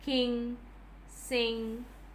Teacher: so it's a voiced velar nasal